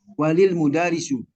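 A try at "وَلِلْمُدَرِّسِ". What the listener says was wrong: Nah, ini Bapak masih memanjangkan didaknya. Didalnya.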